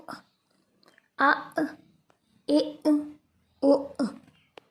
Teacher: حمزہ اور الف کے اوپر جزم آ جائے تو وہاں جھٹکا لگا کے پڑھیں گے. تو دیکھیے یہاں پر حمزہ کے اوپر جزم ہے، حمزہ ساکن ہے، یہاں جھٹکا دیں گے.